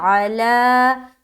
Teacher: آگے عین زبر آ، لام کھڑا زبر لا، علا. تو عین کو نہیں کھینچنا، لا کو کھینچنا کیونکہ اس کے اوپر کھڑا زبر ہے